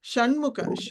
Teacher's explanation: ఠ డ ఢ అని నాలిక పైన తగులుతుంది కదా అలాగే ఠ అని కొంచెం నాలిక పైకి ఇలా తిరిగినట్టు తిరిగి పైన టచ్ అవ్వాలి కొంచెం మూర్ధన్యం దగ్గర